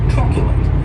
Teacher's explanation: stress is on that first syllable